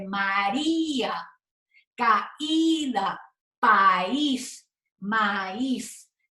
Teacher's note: como suena María, esta I se convierte en fuerte, se convierte en una vocal fuerte